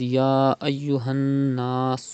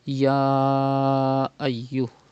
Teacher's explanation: It is Madde Munfasil. You have to stretch up to 5 harkat